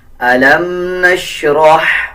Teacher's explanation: रॉ को हा के साथ मिला के पढ़ेंगे, रॉ को पुर पढ़ेंगे और हा को बरीक पढ़ेंगे। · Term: बरीक हा